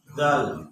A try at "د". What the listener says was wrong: না দল না দাল মোট কয়টি সদ তজ খাগায় কাফ আর কারণবশত আলিফ লাম এই 10টি হরফ ছাড়া আর কোনো হরফ কিন্তু মোটা নাই এজন্য দল হবে না দাল হবে